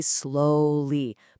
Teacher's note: We all instinctively say slowly, putting that stress on the first part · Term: word stress